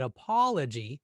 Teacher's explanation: But apology very naturally sounds right with that second syllable a bit longer than the others.